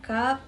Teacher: Huruf kaf, makhrajnya pangkal lidah dan langit-langit atas. Sifatnya hams, syiddah, istifal, dan impita.